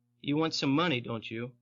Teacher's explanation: falling은 몰라서 묻는 게 아니라 말하는 사람의 확신을 나타낼 경우 하는 것이 falling intonation이죠.